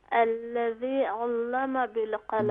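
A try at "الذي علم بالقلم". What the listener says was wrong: जल्दी ना करें, यहाँ पर याय मद्दा है तो हम इसे आराम से और इसे खींच कर पढ़ेंगे। आराम से पढ़िए, जल्दी ना करें।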